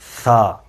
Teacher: سا کی ادائیگی کے لیے آپ نے اپنی زبان کو اپنے دانتوں کے درمیان لے کے آنا ہے، سا، اور ایک الف کے برابر اسے کھینچنا ہے، سا۔